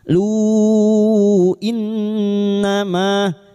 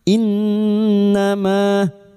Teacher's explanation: nun yang bertasdid guna musyaddadah kita dengungkan selama 3 harakat